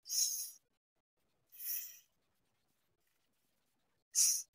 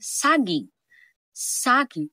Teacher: Halimbawa ang S may mahinang tunog ng hangin. S gaya ng salitang saging.